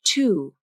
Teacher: Notice how the lips are more neutral at the beginning of the vowel, and then they round into a tight circle at the end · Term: OO vowel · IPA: /u/